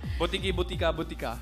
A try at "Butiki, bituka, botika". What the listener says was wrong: Parang wala rin, ano? Dalawang pare-pareho lagi.